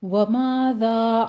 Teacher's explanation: وَمَاذَا میں دونوں جگہ الف مدہ ہے، 2 کاؤنٹ کیجئے ، وَمَاذَا نہیں کہنا اس کو، وَمَاذَا کہنا ہے، زال کو